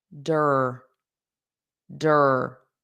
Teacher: So we have that strong r at the end because that e r it's impossible to separate the vowel from it.